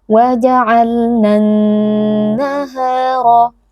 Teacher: Kemudian huruf nun yang bertasydid maka dibaca dengan wajibul gunnah, wajib dibaca dengan dengung yang dipanjangkan